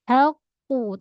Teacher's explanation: Tahan suara pada qaf sifat dia syiddah.